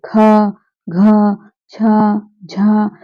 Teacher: इन्हें बोलने में अधिक वायु निकल रही है या वायु हमें लेनी पड़ रही है। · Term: महाप्राण